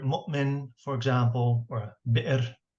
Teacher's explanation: Hamza is what we in English call a glottal stop.